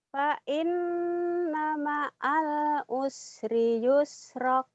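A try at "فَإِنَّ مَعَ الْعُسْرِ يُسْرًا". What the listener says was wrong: Jangan yusrok. Fa inna ma'al usri yusra. Jangan ada kaknya ujungnya.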